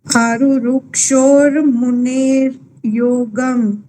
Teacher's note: આરુરુક્ષોર છે ને એટલે વિસર્ગને બદલે રકાર વંચાશે